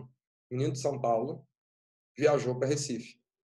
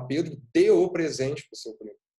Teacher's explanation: O menino de São Paulo, você consegue falar esse negócio tão rápido que esse D some. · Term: D átono